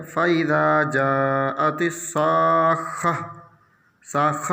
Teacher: گول تا پر آیت کرنے کی وجہ سے یہ ہائے ساکنہ سے بدل جائے گی